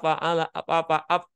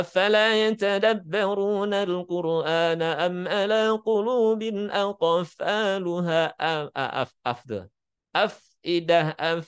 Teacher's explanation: jadi biasakan tadi ketika mengucapkan huruf fa ada suara desisan yang keluar. Kalau dalam ilmu qiraah disebut dengan ta'affuf. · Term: sifat hamas